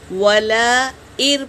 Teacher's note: نون پر سکون ہے لیکن تشدید بڑا ہوتا ہے تو نون کو نہیں پڑھیں گے، حمزہ کو را میں ملائیں گے۔